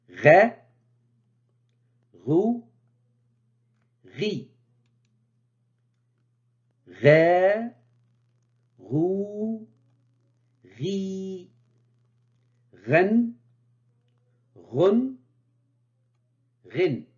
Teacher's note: se prononce au niveau du haut de la gorge au fond du palais la langue recule vers cette zone du fond du palais pour rétrécir le passage de l'air c'est l'équivalent de r du français tel que dans les mots